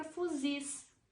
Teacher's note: palavra que possui a última sílaba como mais forte ou seja a sílaba tônica é a última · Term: oxítona